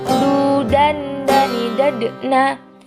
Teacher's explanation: Keluar dengan cara menyentuhkan ujung lidah ke gusi bagian atas dalam keadaan mati. Huruf dal terdengar suaranya memantul.